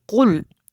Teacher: یہ قاف موٹا ہے، اس کو کل نہیں پڑھنا، باریک والا کاف نہیں پڑھنا